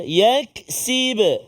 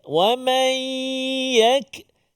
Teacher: Kita sebut yak tu dia lembut, dia jangan bunyi tebal. Wa man tu bunyi tebal.